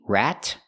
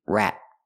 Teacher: You can make a T, rat, or a stop T, rat.